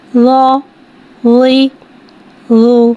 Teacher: ज़ा को एक अलिफ यानी 2 हरकत के बराबर खींच के पढ़ेंगे। ज़ा हुर्फ़ मुस्तालिया है, लिहाजा इसकी आवाज़ हलक से मोटी अदा होगी